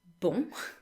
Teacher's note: the O and N make one vowel sound, which is nasalized